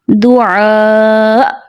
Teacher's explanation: جب حمزہ پہ ساکن ہوگا، حمزہ وقف کریں گے تو وہاں حمزہ کو جھٹکے سے ادا کریں گے